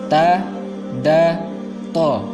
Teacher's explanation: Ketiga huruf ini sama-sama makhrajnya atau tempat keluar hurufnya ketika kita ucapkan adalah ujung lidah tempelkan ke pangkal gigi seri, tempat tumbuh gigi seri, ta, da, to.